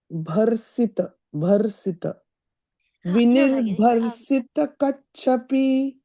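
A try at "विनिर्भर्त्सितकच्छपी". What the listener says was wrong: Before the sa, Bhagi, you're saying bharsita should be bharsita. So the ta is before the sa. Vinir-bharsita kachhapi. The takara should be heard while chanting. The ta is there. The ta before the sa. Like half ta before si.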